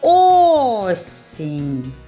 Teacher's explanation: більше чутно звук о над першим голосним ставимо наголос